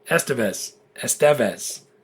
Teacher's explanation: You put the stress on the penultimate syllable.